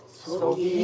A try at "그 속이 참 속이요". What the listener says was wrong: 이게 떠는 음이야. 그 속이 참 요건 떠는 음이 아니야.